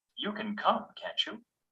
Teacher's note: We use rising intonation with tag questions to ask a real question